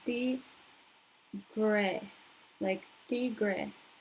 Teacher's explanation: And then you have the rest of tigre. You have the R again, which is going to be in the middle of your mouth, where the D sound is, like in butter. So you go tigre, like tigre.